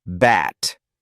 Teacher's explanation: It begins with the B sound. Your lips come together before you release air.